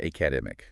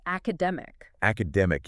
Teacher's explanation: The stress must be in the middle of the word.